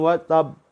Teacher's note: Lebih kuat lagi qalqalahnya daripada yang tidak ditasydid. Kalau yang tidak ditasydid langsung qalqalah, langsung mantul.